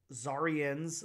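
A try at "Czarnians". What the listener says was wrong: You forgot the end. You forgot the end.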